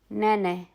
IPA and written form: 'nɛ.nɛ (Nenes)